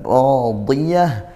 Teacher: Ra ini fathah, ra-nya maka tafkhim dibaca tebal. Radiyah, di dodnya tebal tetap meskipun kasrah gitu ya, karena dia huruf itbaq